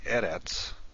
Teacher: the first syllable is accented